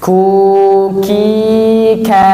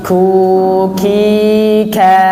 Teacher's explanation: Huruf kaf makhrajnya di pangkal lidah, bertemu langit-langit lunak dan keras sekaligus.